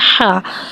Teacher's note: हा में हवा को ज़ाहिर करके पढ़ेंगे। हा के ऊपर ज़बर है, ज़बर को मुँह खोल के अदा करके पढ़ेंगे।